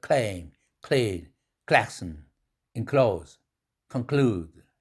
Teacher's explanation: 강한 모음 앞에서 강하게 에스피레이션을 쏟아내되 옆구리로 샌다.